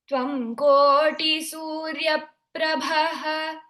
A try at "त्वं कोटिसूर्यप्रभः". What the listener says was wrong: Again, please combine the sandhi there. त्वं कोटिसूर्यप्रभः